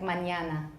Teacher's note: that's just a palatalized n that means there's a yes sound together with the n